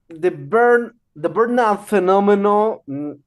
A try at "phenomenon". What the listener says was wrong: Phenomenon. It's not phenomenal, phenomenon. Phenomenon. Phenomenon.